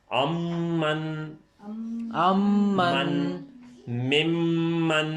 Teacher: پچھلی میم کو بھی ہم نے دبا کے تھوڑا سا لمبا کیا